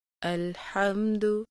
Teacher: دال کی پیش کو مجہول ہونے سے بچائیے